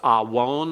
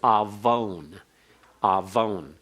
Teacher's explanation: Now, awon is pronounced as though the wow is a consonant as well as a vowel. It's actually just a wow consonant with a holum.